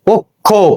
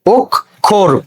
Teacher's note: শব্দের শুরুতে অ থাকলে এবং তারপরে যদি ক্ষীয় থাকে, তাহলে এই আদ্য অ এই উচ্চারণ কি হয়ে যাবে, ও হয়ে যাবে